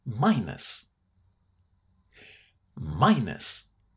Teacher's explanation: The ending here, again the letter U, this time in an unstressed syllable, is going to be pronounced in a very, very short way. So it's not us or as a lot of learners say it.